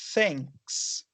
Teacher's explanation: Para fazer esse som, você coloca a pontinha da língua atrás dos dentes de cima e as cordas vocais não vibram.